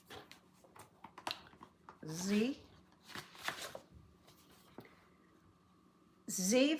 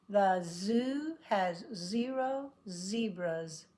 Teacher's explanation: get out all the tongue is trying to stop it but right in the middle the air is leaking out and it vibrates